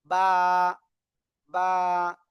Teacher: দুই ঠোঁটের ভিজা অংশ থেকে বা উচ্চারিত হয়